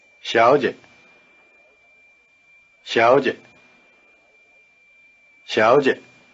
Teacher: in this word both syllables begin with the tongue in the forward position the so called palatal position